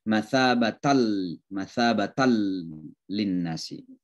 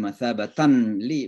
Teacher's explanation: Itu dalam ilmu tajwid disebut idgham bila gunnah. Jadi dimasukkan tanpa mendengun. Jadi seolah-olah suara tan, suara nun, n, itu hilang sama sekali karena masuk ke dalam lam.